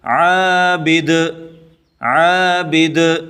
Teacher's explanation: اگلا حرف عین الف زبر ع، عین کو گلے سے نکال کے پڑھیں گے۔ عین الف زبر ع، با زیر بی، عابی، دال دو پیش دن، عابدن، وقفاً، عابد، عابد۔